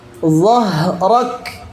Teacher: Huruf kaf itu syiddah artinya kuat dan tertahan. Dhahrak tertahan, tapi karena dia juga hams, maka nafasnya harus mengalir. Setelah suara tertahan, nafas mengalir.